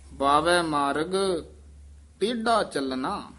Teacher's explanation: ਟੇਢਾ ਡਡੇ ਨਾਲ ਨਹੀਂ ਬੋਲਣਾ ਟੇਢਾ ਨਹੀਂ ਕਹਿਣਾ ਟੇਢਾ ਢੱਡਾ ਲਾ ਕੇ ਉਚਾਰਨ ਕਰਨਾ